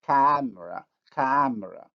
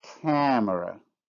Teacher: if I pronounce the word without nasalization it would be camera camera with nasalization camera